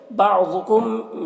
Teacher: मीम में इज़हार शफ़वी हो रहा है, इसे जल्द पढ़ना है